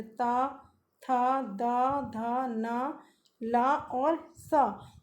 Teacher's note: अब है दंत। दंत में जिन अक्षरों का उच्चारण ऊपर के दांतों पर जीभ लगाने से होता है